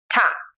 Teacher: Second comes ta wombe, pronounced ta. It is an aspirated T sound, like an English T in true or tense.